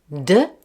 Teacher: So d, which is voiced, yes, you got it, it needs less breath force because it's voiced.